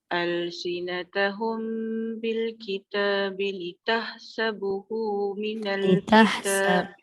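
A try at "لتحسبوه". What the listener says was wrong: Litahsabuhu minal. Jangan litahsabuhu. Bu panjang, hu yang pendek.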